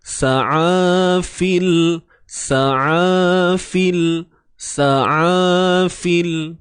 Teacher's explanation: Huruf ain daripada tengah kerongkong disempitkan.